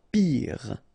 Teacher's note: Pire. Final E not pronounced, so R at the end.